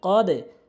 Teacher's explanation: বাজিম দাল হচ্ছে নিচের দিকে ধাক্কা